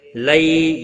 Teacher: یا لین ہے، تھوڑا نرمی کے ساتھ کھینچ کر ادا کریں گے